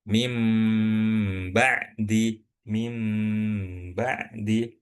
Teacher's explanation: Nah, iklab seperti yang kita udah pelajari yaitu nun sukun bertemu ba, dan cara dengungin huruf nunnya itu ketika caranya seperti kita mengucapkan huruf mim